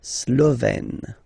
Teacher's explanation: Remember, E accent grave, you open it, Slovène. La Hongrie, Hongrois, Hongroise.